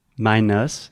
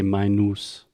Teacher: the common tendency for most Brazilians and Portuguese speakers is to replace that uh sound with an ooh sound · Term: schwa sound